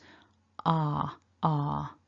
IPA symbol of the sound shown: ɑ: